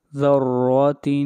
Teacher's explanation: ذال را زبر ذر، را زبر را، ذر، تا 2 زیر تن، ذرات۔ را کو موٹا پڑھیں گے اس لیے کہ را کے اوپر زبر ہے